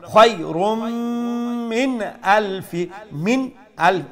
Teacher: এখানে আমরা নুন সাকিনরে ইজহার করে ফরমু স্পষ্ট করে ফরমু এখানে কোনো নেজাল সাউন্ড ওইতো নাই